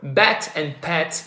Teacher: So bet and pet, if you take the words, the first sound, the P and the B, you're gonna see that you're gonna be using your both lips to produce them, and the air is almost being completely stopped, so it's a stop sound. What differentiates both of these sounds is how much the vocal cords vibrate.